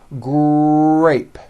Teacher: the R sound is the strongest sound of the blend, and your lips often come forward before you even say the word. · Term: R blends